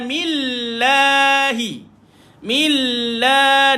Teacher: lafzul jalalah dibaca dengan nipis sebab huruf sebelumnya baris di bawah